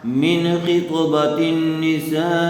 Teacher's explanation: نون ساکن کے بعد حروف حلقی میں سے خا آیا ہوا ہے، اس لیے بغیر غننے کے جلد اظہار کر کے پڑھیں گے